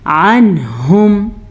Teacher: अनहुम, यहाँ पे इजहार का कायदा हो रहा है। नून साकिन के बाद हा है जो कि हरूफ हल्की में से है, तो यहाँ पे हम इजहार का कायदा करेंगे